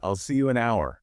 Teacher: Because the H is silent. It's a ghost letter. It's there on the page, but in the air, it doesn't exist. >> The word effectively starts with O.